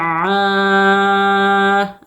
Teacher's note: عین کے مخرج کو صحیح طریقے سے نکالنا ہے حمزہ سے نہیں بدلنا ہے